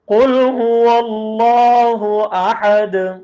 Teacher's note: احد ہا نکال کے دار پر قلقلہ کر کے